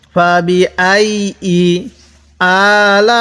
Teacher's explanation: এই লামের মধ্যে আমরা ৪ আলিফ টান দিব